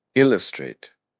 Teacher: with the accent on the first syllable